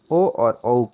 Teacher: ओ और औ का उच्चारण स्थान कंठोष्ठ माना गया है